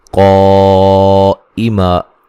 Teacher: قائما مد واجب ہے، حمزہ کو واضح پڑھیں گے، ٹھیک ہے تحقیق کے ساتھ.